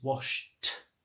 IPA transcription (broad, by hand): wɒʃt